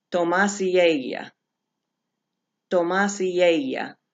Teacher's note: So you're going to remember, I'm having trouble getting my board to come up, but you're going to remember to treat it, add it in as an example in the A, you're going to add that E sound to the A sound of ella